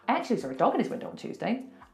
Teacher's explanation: It's crazy talk, and it's because it's like I'm saying one big word. There are no gaps in the middle, it's just one long word. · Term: linking sounds